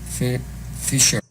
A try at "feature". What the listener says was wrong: But it's more cheap, sheep. It's feature, feature, fisher. Notice how the TU spelling represents a CH sound in this word. Yeah, you can probably, lesson number 13, you can work on more clearly distinguishing the CH and the SH sounds. For example, match, mash, cheap, sheep, feature, fisher.